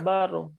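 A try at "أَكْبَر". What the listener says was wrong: রটাকে মোটা হবে, বার হবে না, আকবার বলে পাতলা হয়ে গেল, রটাকে মোটা করে মুখ ভরে বলতে হবে, বাউ আকবার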